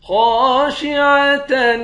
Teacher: خا کو موٹا پڑھیں گے، ایک الف کے مقدار کھینچ کر پڑھیں گے، الف حروف مدہ ہے۔